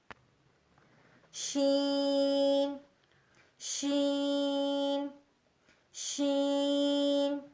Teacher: وسط زبان یعنی زبان کی بیچ کا حصہ جب بالمقابل اوپر کے تالو سے لگے تو اس سے شین شین ادا ہوتا ہے۔ وسط زبان اور بالمقابل اوپر کا تالو تو اس سے شین شین ادا ہوتا ہے۔